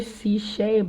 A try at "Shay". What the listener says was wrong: the C, the C and the S, it's silent, so it's Shay. It's pronounced Shay.